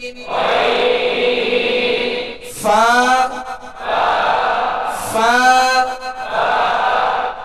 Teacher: اوپر کے دونوں دانت جو سامنے کے اوپر کے دو دانت ہیں، ان کا کنارہ اور نچلے ہونٹ کا تر حصہ، اس سے فا ادا ہوتا ہے ، اس سے فا ادا ہوتا ہے، یہ اس کا مخرج